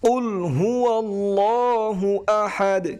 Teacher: بسم الله الرحمن الرحيم قل هو الله এখানে যে কপটি রয়েছে কপটি গলার ভিতর থেকে একটু চাপ দিয়ে উচ্চারণ করতে হবে